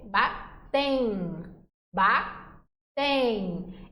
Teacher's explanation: Então, esse E aqui, junto desse Mzinho, é como se eu pudesse dizer que tem um Izinho aqui. Além desse M marcar a nasalização, eu também tenho um Izinho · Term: ditongo